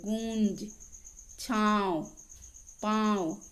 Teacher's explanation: अनुनासिक, इसका उच्चारण नाक और गले दोनों से होता है, जैसे गूंज, छांव, पांव आदि।